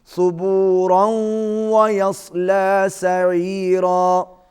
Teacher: اگر آپ اس کو ملائیں گے تو یہاں پر ادغام الغنہ ہوگا، آواز ناک میں جائے گی۔